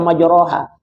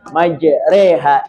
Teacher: imalah membaca fathah antara fathah dan kasrah bainal fat Wal kasr antara bunyi A dan I menjadi e